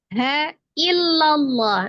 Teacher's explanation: Jadi tidak jadi mad, la-nya tidak jadi panjang, langsung diidghamkan ke huruf lam, langsung ditasdidkan ke huruf lam di lafaz Allah. Maka dibaca tafkhim atau tebal karena sebelumnya ada huruf yang berharokat fathah ya, maka dibaca tebal. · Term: iltiqo ussakinain